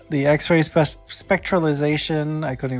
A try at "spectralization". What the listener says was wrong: You're skipping like 2 syllables. Spectralization leaves out the second I.